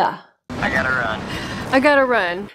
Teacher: since there are two T's they'll be reduced to one next since the t is now surrounded by vowels it becomes a lingual flap T which sounds very much like a d